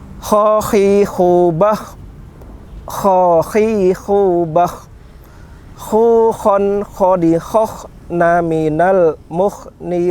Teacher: Kalau kha itu pengucapannya sedikit lebih kasar dibanding dengan huruf H. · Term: huruf kha